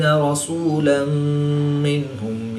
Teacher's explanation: 2 زبر کی تنوین کے بعد میم حروف معلوم میں سے ہے تو یہاں پر ادغام مع الغنہ ہوگا، یہاں پر بھی غنہ کر کے پڑھیں گے۔